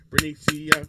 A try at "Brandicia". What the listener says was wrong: Brandicia. Nope, you still messed it up. You keep putting the N in there.